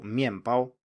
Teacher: speakers say the word quickly it's very likely that they will actually say an m in the middle here instead of an n